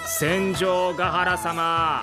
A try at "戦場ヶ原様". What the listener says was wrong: カタカナ発音はいただけないわ。